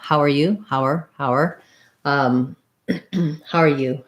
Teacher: I almost always hear the hower part being further reduced to just har. So rather than hower, it's slightly more clipped.